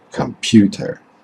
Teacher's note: computer is a word that consists of three syllables unstressed stressed and an unstressed syllable